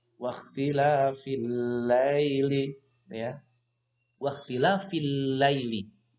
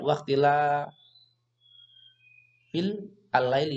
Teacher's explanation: Ini alif lam ini namanya alif lam samsiah ataupun bacaannya namanya idgham samsiah. Alif lamnya tidak terbaca.